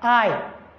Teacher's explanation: It is articulated I. You start with A and then you end with E. That's why it glides from one symbol or sound to another. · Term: diphthong